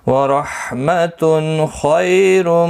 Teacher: تنوین کے بعد خا آئے، اظہار حلقی ہوگا، گنہ نہیں ہوگا. خا مستعلیہ ہے، پر پڑھا جائے گا.